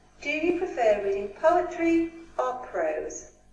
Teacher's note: If you notice here that we've got choices. When we have choices, we go up. Poetry, we go up. And then prose, we go down.